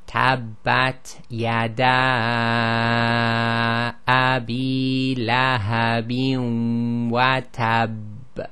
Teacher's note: It sounds like a difference in the strength, but really it's holding the shadda a little bit.